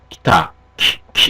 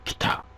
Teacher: 그래서 예를 들어서 기타 같은 것도 모음을 갖다가 기타 이렇게 발음하시는 게 아니라 요 이 모음 부분 무성화 앞에 오면 이 무성음 T 앞에 오는 이 모음 부분이 없어지게 되죠. 무성화돼서 기타 키 이렇게 되는 거죠.